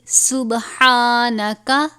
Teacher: حروف قلقلہ میں سے قلقلہ کریں گے، یعنی جنبش کی آواز نکلے ، ہا کے اوپر کھڑا زبر ہے ایک الف کے برابر،